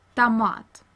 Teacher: we read O as short A in the unstressed syllable. For example, like in the Russian word tomat.